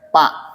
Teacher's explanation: gagalnya orang Sunda di Fa menjadi P